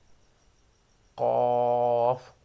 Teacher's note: जबान की जड़ तालों के नरम हिस्से से लगे यानी जुबान जहां से हमारी शुरू होती है। काफ यह मोटा हरूफ भी है। जब जुबान की जड़ तालों के सख्त हिस्से से लगे।